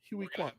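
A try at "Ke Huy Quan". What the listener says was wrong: Ki Hu Kwan. It's Ki Huey Kwan or Ki Hu Kwan. It's not Huey. Huey like Huey Freeman?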